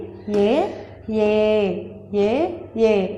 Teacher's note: ఇక్కడ చూడండి రెండు ఉచ్చారణ స్థానాలు ఉండాలన్నమాట అలాంటి అక్షరాలను కంఠ తాలవ్యాలు అని అంటారు అంటే మనం కంఠం నుంచి తాలువు నుంచి ఇవి రెండిటిని పలుకుతాము